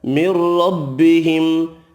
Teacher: أَنَّهُ الْحَقُّ، نون مشدد پر غنہ کریں گے، قاف حروف مستعلیہ پر پڑھا جائے گا۔ من ربهم، ادغام بلا غنہ ہوگا، را زبر کی وجہ سے پر پڑھیں گے، ملانے کی صورت میں میم کا اظہار ہوگا۔